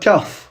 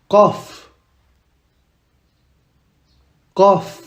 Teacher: Ça doit venir de la gorge.